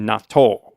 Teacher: you put the emphasis on the second syllable and yeah there's a little Gap after the t · I also wanted to mention, in Japanese, I think the pronunciation is like natto. The double T sound. You put the emphasis on the second syllable, and there's a little gap after the T's, kind of natto.